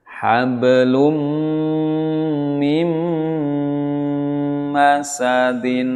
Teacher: nun sukun bertemu mim, sama harus mingkem ya, mendengung tapi dengan merapatkan bibir kita. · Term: idgham bi ghunnah